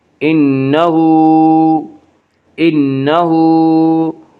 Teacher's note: علیہ، انہو نون مشدد غنہ ہوگا، غنہ کی مقدار 1 الف ہے، انہو ہا کے اوپر الٹا پیش ہے، الٹا پیش قائم مقام ہے وا مدہ، اس لیے الٹا پیش کو 1 الف کے برابر کھینچ کر پڑھیں گے